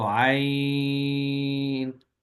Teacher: عین کو 2 اور 3 گنا کھینچنا دونوں طرح درست ہے، کیونکہ یہاں پہ حرف مدہ نہیں بلکہ حرف لین ہے